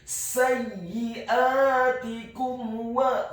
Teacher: Hukum bacaannya adalah izhar syafawi. Dibaca dengan jelas, tidak boleh digunnahkan huruf mim yang sukunnya.